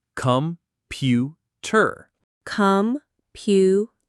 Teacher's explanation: The word is computer. Stress on pew. Computer. So the O and the E become schwas. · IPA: /ə/